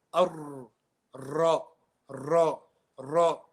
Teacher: So the lips do come round. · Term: letter Ra